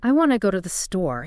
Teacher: The key information is want and store. So they get stressed.